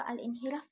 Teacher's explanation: pengucapan huruf yang disertai bergetar secara berulang pada ujung lidah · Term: menggetarkan ujung lidah